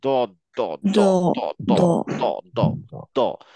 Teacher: আমার জিহ্বাটা দাঁতের দুই সাইডে চাপ দিবে, কিন্তু সামনে জিভ দাঁতে টাচ করবে না। এটা ছিল আমার মেইন পয়েন্ট, যে আমি এই দোয়াতটা যখন উচ্চারণ করব দ, আমার সামনের যে দাঁত সেই দাঁতে আমার জিভ লাগাবো না, জিভটা গুটিয়ে ধরে রাখবো, রেখে দুই সাইডে চাপ দিব, যাতে দ দ দ দ দ দ দ দ দ দ।